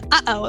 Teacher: I'm over enunciating it to hopefully the mic will pick it up, but it is a glottal stop, like between the uh-oh. That sound in between uh-oh is a glottal stop.